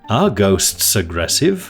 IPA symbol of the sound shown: g